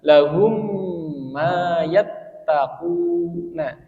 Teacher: mim sukun bertemu mim maka membacanya dia di tahan atau gunah ya gunah atau didengungkan